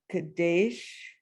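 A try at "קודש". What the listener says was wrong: No, look at the vowels. There's a dot on top. Kodesh.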